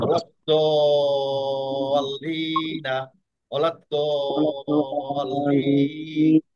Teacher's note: আবার বেসিক মাদের পরের অক্ষরে তারদিদ আসার কারণে এটা হয়ে যাবে বাদে লাজিম, অর্থাৎ লাজি, হ্যাঁ। তিন আলিফ টানতে হবে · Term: মাদ্দে লাজিম